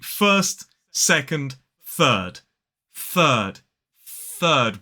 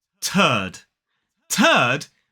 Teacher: we use that unvoiced th at the start of the word third